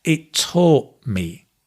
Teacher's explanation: actually taught, the final t is dropped when you have m after